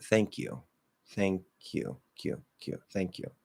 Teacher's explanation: So that again is a weak K, because if it's at the end and it links, it's just going to be weak. It's only strong or aspirated at the start of a stressed syllable.